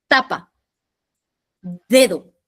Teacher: Lengua, la lengua se acerca a los dientes superiores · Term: dentales